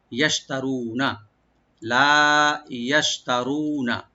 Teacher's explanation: ইয়াশতারুনা, ইয়াটা ওপেন রাখবেন, শিনটাকে রাইট দিবেন, শিনের মাখরাজ হলো জিহ্বার মাঝখান, তার উপর তালু, ইয়াশ, তা ওপেন থাকবে, র এখানে ডিপ করে একালিফ টানবো, আর নুনে কোনো টান নাই।